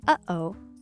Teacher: this quirky catch-in-your-throat pause between uh-oh